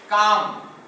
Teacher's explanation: लघु के ठीक 2 गुना समय लगना है गुरु में।